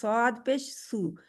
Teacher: जुबान की जड़ पीछे से ऊपर उठती है और स्वाद को मोटा कर देती है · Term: मोटा हर्फ